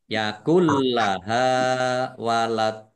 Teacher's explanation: Nun sukun bertemu dengan huruf lam, bacaan idgham bila gunnah juga, ya. Masuk dengan tidak mendengung, langsung masuk ke huruf lam, ditandai lamnya ada tasdidnya, lamnya dibaca double.